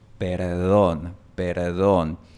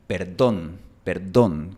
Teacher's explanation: En la mayor parte del mundo esta palabra se pronuncia con una D suave. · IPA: [ð]